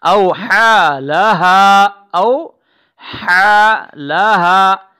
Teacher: لها، او حا لها، پہلے ہا ہے حرک سے ادا ہوگی، لہا کی ہا جو ہے وہ سینے سے ادا ہو جائے گی